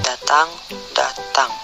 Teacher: Konsonan D, bunyi apikoalveolar hambat bersuara, contoh kata datang, datang.